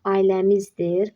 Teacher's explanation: Ailəmizdir sözündə r düşəcək sondakı. Yəni burda düşmə var.